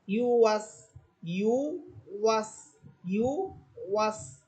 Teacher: ওয়াও হরফ, ঠোঁট গোল হবে